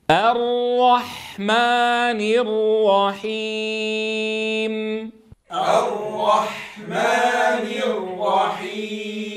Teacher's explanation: نتنبه أيها الأحبة في هذه الآية أن نبدأ بالهمزة مرققة حتى لا تتأثر بالراء المفخمة بعدها، فلا نقول الرحمن وإنما را الراء.